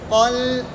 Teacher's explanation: لام کو باریک کریں گے قا کو موٹا کریں گے